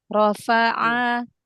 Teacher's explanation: Huruf ainnya buka biar jangan seperti hamzah.